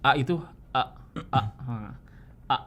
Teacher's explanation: Kalau hamzah itu dari aqsal halqi, sementara ain itu dari wastul halqi. Aqsal halqi apa? Dari pangkal tenggorokan.